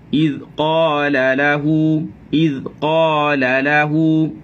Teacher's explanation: Jadi qaf jangan terlalu tebal. Qaf ketebalannya adalah grade yang kedua, kerana yang lebih tebal daripada itu ialah huruf-huruf itbaq. Qaf huruf isti'la sahaja. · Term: isti'la infitah